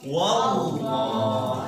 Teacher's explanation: Lafaz Allah sebelumnya harokat fathah, maka cara membacanya atau cara pengucapannya harus tebal ke lafaz Allah, ya. Tebal ke lafaz Allah sambil ditekan. Kenapa sambil ditekan? Karena di sini ada tasydid.